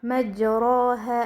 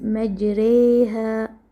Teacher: How does imala affect the sounds of the alif and the fatha? During imala, the sound of alif is inclined toward ya and the fatha is inclined toward kasra. This create a sound that lies between a pure fatha and a pure kasra. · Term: major Imala